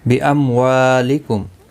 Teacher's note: میم کے بعد واو اظہار شفوی ہوگا